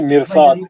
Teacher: اس کو موٹا، یہ زیر رہنے کے باوجود بے شک را ساکن سے پہلے زیر ہے لیکن فالوڈ بائی مستعلیہ اس کو موٹا پڑھیں گے، اس کو بالکل.